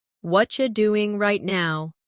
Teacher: In natural speech, what are you becomes what you.